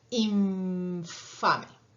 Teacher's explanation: Ustedes piensan que están pronunciando una N, infame, pero en realidad están pronunciando una especie de M con F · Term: labio dental